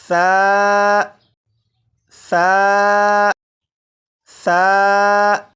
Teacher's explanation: सा को मैंने नरमी से पढ़ा, यानी सीटी की आवाज़ के बगैर पढ़ा